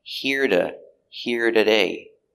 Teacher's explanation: a t between an r and a vowel changes to a d